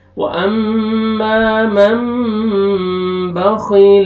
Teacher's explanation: नून साकिन के बाद बा आ रहा है, यहाँ पे इक़लाब करेंगे और इख्फा करेंगे गुन्ना के साथ, नून को मीम में चेंज करेंगे